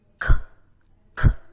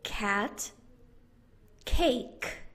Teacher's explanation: Push the back of your tongue to the back of your throat. K, k. Your voice box is turned off.